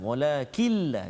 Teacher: Walakilla, jangan bunyi nun lagi, jangan. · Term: idgham bila gunnah